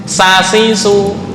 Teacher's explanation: Baini ra'sil lisan, ujung lidah, ma'a safhatis tsanaya as-sufla, beserta ujung gigi bawah. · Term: satu makhraj